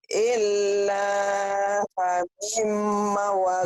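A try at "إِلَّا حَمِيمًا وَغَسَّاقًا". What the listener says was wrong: Mi-nya panjang kan? Mi-nya panjang. Mi-nya kan ada garis tuh. Illa hamimau wa gosaqo.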